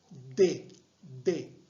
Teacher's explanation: La punta de la lengua se dirige ¿dónde? A nivel de los incisivos. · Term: linguodentales